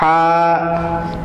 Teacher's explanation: گلے کے درمیان والے حصے سے، کہ بالکل سانس جیسی آواز ہے، جیسے ہم سانس ٹھنڈی سانس باہر نکالتے ہیں